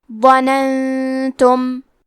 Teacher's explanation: یہاں نون ساکن ہے، پھر حرف تا ہے. تا حروف الاخفاء میں سے ہے تو ہم یہ حکم کو غنہ کے ساتھ ادا کریں گے